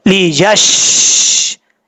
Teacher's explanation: لی یش، شین میں قلقلہ نہیں کرنا. بعض اوقات لوگ پڑھتے ہیں لی یش ترو، یش ترو نہیں پڑھنا.